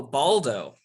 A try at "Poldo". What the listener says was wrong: No, it's with a P.